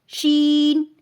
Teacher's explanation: وسط زبان یعنی زبان کا درمیانی حصہ اوپر تالو سے لگے تو شین ادا ہوتا ہے